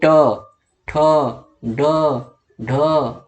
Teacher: जीभ आपकी मुड़ रही है, पीछे की तरफ मुड़ रही है, यानी जीभ आपकी ऐसे है और ऐसे हो जा रही है। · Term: मूर्धन